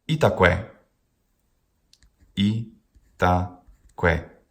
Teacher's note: each syllable has a short vowel and it ends in that very same short vowel